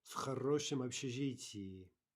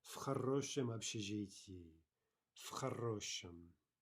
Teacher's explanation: there we have the devoicing, right? So we're really saying f